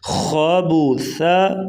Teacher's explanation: یہاں پر وقف کریں گے خابوثا تو وقف خابوث، خا کو پر پڑھیں گے اور سا نرمی سے ادا کریں گے